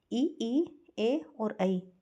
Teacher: यानी जीभ के पहले वाला जो दांतों के पास रहता है वह अग्र स्वर